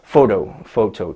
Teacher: photo, 2 syllables, first one is stressed. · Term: word stress